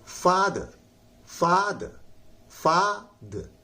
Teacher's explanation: लेकिन जब इसको लोग पढ़ेंगे तो हो जाएगा फादर, फादर, फादर। फा पर जोर लगाइए, द कहिए, आर को ना साइलेंट कर दीजिए